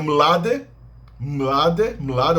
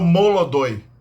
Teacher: é a palavra russa para jovem como evoluiu no slavo antigo ele ganhou essa sílaba adicional para separar encontros consonantais iniciais